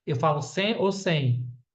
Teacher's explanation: Sem é como esse M tivesse som de U.